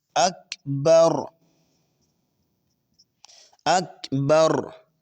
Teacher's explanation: आप देखेंगे कि आपकी जुबान थोड़ा सा वाइब्रेट होगी। थोड़ा सा एक दफा हिलेगी। लेकिन अगर आप इसी नेचुरल रखेंगे तकरार को तो दुरुस्त होगा।